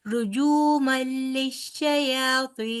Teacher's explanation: اور دوسرا رجو، جو جیم پیش واو، واو مدہ ہے نا، جو ہوگا، رجو مل نہیں ہوگا، رجو مل آپ کہہ رہے ہیں نا، رجو مل، را کو تیزی سے پڑھیں گے، جیم کو واو مدہ ہے آگے، تو اس کو آپ 2 حرف لمبا کریں گے